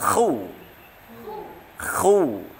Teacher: Kha-nya kita ngorokkan khu. Khu tebal